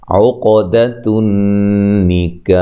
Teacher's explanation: قاف پہ قلقلہ، نون مشدد پہ غنہ ضروری ہے